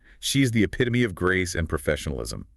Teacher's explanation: that final E is really a short E or maybe even a schwa sound. And the stress is on the pit.